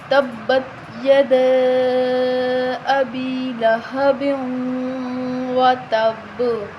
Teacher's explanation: اب با کی اینڈ پہ جو آواز آ رہی ہے اس کا مطلب کہ ہم با پہ کیا کر رہے ہیں؟ قلقلہ کر رہے ہیں